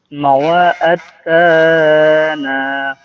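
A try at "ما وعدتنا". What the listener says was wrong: তাতে টান হবে না মাওয়াআত্তানা মাওয়াআত্তানা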